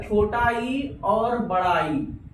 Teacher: इसके उच्चारण में जीभ के आगे का भाग ऊपर उठ जाता है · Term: अग्र स्वर